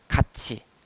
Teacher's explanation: 티읕 소리가 안 나니까 같이 이렇게 치읓이 발음되는 것처럼 표기를 해 주는 것이 우리 현실 발음과 훨씬 더 일치하겠죠.